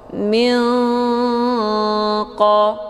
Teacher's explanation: Mana ab'ad itu jauh, karena makharijul huruf nun dengan qaf posisinya saling berjauhan. Cara bacanya, nunnya disamarkan, kemudian siap-siap menuju ke huruf qaf. · Hukum bacaan ikhfa ab'ad dibacanya sambil didengungkan.